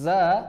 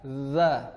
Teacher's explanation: Huruf zai memiliki sifat sofir, sedangkan huruf zal tanpa sifat sofir.